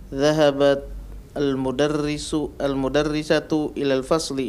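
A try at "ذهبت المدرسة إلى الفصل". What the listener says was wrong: Naam, dhahabat al-mudarrisatu ila al-fasli.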